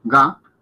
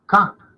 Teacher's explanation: cuando decimos ga suenan fuerte, vibran fuerte, y cuando decimos ka no tanto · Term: sonora